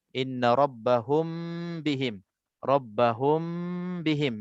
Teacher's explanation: Jadi bila mim mati bertemu dengan ba, cara bacaannya dengung 2 harakat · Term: ikhfa syafawi